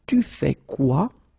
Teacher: you should raise your voice at the end, just to make clear that it's a question